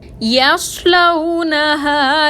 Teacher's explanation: صاد حروف مستعلیہ میں سے ہے، اس کو موٹا پڑھیں گے، لیکن یا کو صاد سے ملاتے وقت اس بات کا خیال رکھیں گے کہ یا موٹا نہ ہو